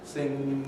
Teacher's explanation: the spelling at the end of a word such as sin a standard pronunciation just has a velar nasal